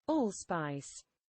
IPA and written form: ˈɔːlˌspaɪs (allspice)